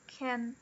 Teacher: o can, geralmente, ele é unstressed. E, por consequência, ele é falado com o som do schwa